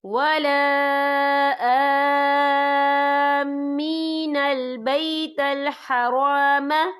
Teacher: ہم اسے 6 حرکت کے برابر کھینچ کے پڑھیں گے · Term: مد لازم